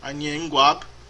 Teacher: Inclusive o K do verbo quab vira G aí, porque tem uma assimilação da nasalização, da sonorização do N. Anhen guab, eu sei falar.